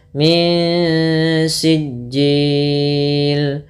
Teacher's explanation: tipiskan ketika bertemu dengan sin, itu ikhfa-nya. Langsung ke makhraj langsung ke makhraj pada huruf sinnya.